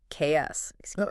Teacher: That X sound is actually two linked sounds. KS.